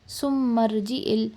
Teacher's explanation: میم کے اوپر کیونکہ تشدید ہے ہم اس کو تھوڑا پریشر ڈال کر پڑھیں گے، ایٹ لیسٹ 1-2 سیکنڈ کا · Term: میم شدہ